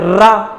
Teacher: जब आप रा का उच्चारण कर रहे हैं तो आपकी जीभ या जिह्वा क्या हो रही, कंपन कर रही है या घिसीट रही है, इसीलिए इसको एक नाम से जानते हैं, प्रकंपित के नाम से जानते हैं।